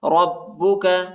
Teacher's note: را کو با کے ساتھ ملائیں گے اور با کو شدت کے ساتھ پڑھنا ہے، سختی کے ساتھ